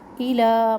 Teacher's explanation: الا مد منفصل یہ بھی 3 الف کے برابر لمبا ہوگا